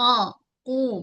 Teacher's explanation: Baris depan muncung mulut. Tebalkan qaf. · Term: huruf qaf